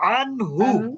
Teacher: তাহলে এখানে ননটাকে আমরা স্পষ্ট করব আন স্পষ্ট করলে কিন্তু দন্তন্যর উচ্চারণ আসবে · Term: ইজহার